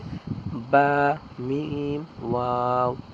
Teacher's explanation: দুই ঠোঁটের মধ্যস্থল হতে পড়া হবে